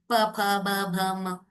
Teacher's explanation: प वर्ग वाले अक्षरों को बोलने के लिए होठों की जरूरत पड़ती है.